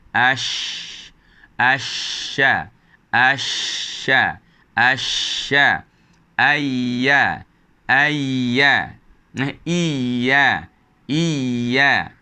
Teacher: Hanya lidah akan mendekati lelangit atas, membentuk satu lorong yang sempit, maka akan terhasil bunyi ash, asha, asha, asha, ayya, ayya, iya, iya. Jadi tidak ada sekatan, akan tapi lorong yang sempit itu menyebabkan berlakunya geseran udara yang menghasilkan bunyi huruf shin dan juga ya.